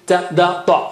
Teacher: ta was touching again to the roots of the upper teeth